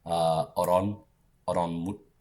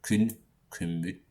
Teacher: So that final N changes to an M.